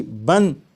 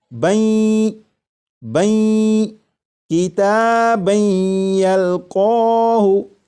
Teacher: جب تنوین کا یا میں ادغام ہوگا تو درمیان میں جو نون ساکن کی آواز آ رہی ہوگی وہ پھر اس طرح سے آواز نہیں آئے گی بن، بلکہ وہ آواز اس طرح ہوگی بین بین کتابن یلقاہ۔